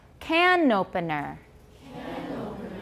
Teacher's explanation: you can link the N to the next word because it starts with a vowel